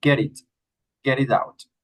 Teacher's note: The T sound of get like an R.